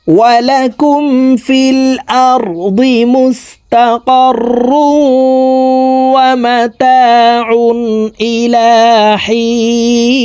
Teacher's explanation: গুন্না তানউইনের পরে ইদগামে বা গুন্নার হরফ ওয়াও আসছে এই কারণে এই তানউইন ওয়ালা রটি তাসদিদ ওয়ালা ওয়ার সাথে গুন্নার সহিত মিলাইয়া পড়ব